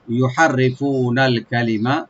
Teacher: রাটাকে মাঝখানে এখানে একটু আমরা পাতলা করে পড়বো